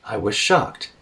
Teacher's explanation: You could also say it as I was, both in a low tone.